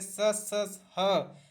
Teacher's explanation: जब जब स बोलेंगे स ह, तो थोड़ा घर्षण और रगड़ होगा। फलस्वरूप उत्पन्न उसमें वायु, मतलब आपके मुंह से उसमें वायु निकलेगी।